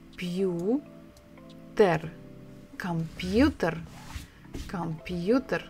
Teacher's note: So the stress is on the third syllable